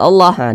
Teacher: baca Alif kecil nih yang berdiri atau tanda baca fathah berdiriah maka kalimat Allah dibaca panjang ini namanya Mad thi'i panjangnya dua harakat atau kira-kira dua ketukan